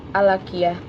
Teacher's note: karena hukum bacaan alif lam bertemu dengan huruf qaf, maka cara bacanya juga jelas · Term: alif lam qamariyah